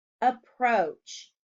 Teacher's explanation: Approach has a long O sound in the second syllable.